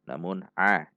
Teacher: Tidak dibaca nga. Juga tidak dibaca a seperti hamzah. Namun a di tengah tenggorokan. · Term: huruf ain